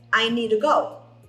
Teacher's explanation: Esse to virou ru.